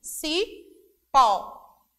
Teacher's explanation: Então, o tom ao pronunciarmos é mais forte. Se é mais forte, então a sílaba tônica é o pó.